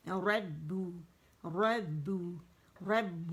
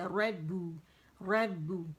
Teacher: بو نہیں, موٹا نہیں کریں گے, با باریک ہے